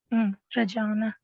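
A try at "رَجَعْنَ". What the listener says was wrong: लंबा नहीं करना है इसको, नून ज़बर ना बस पढ़ना है, रजाअना।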